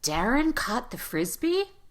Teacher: we're going to go up in pitch at the end of the sentence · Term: question